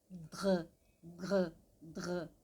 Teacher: O dr, o que vai encostar no céu da boca é o meio da língua.